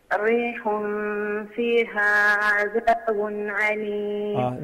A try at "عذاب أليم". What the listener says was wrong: Because just imagine you said عذاب. So you pronounce the first letter of the word عذاب as عين. But it is not right to say عليم as well. Because the meaning has been changed completely. Now it is أليم. عذاب أليم.